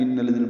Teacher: نون مشدد پہ غنہ اور الذین کے لام سے ملانا ہے، دال نرمی سے پڑھنا ہے، 2 حرکات لمبا کرنا ہے.